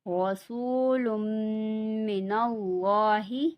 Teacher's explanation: یہاں پہ لام میم کے ساتھ ملے گا اور اللہ کے لام کو پر پڑھا جائے گا یعنی کہ موٹا پڑھا جائے گا